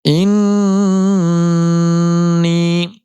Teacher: نون پر تشدید آنے کی وجہ سے ایک الف کی مقدار گننا ہوگا